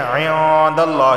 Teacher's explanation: نون ساکن کے بعد دال آیا ہے، دال حروف اخفا میں سے ہے، اخفا والا غنہ ہوگا۔ داللہ، لفظ اللہ سے پہلے زبر آیا ہے تو لفظ اللہ کو موٹا پڑھا جائے گا۔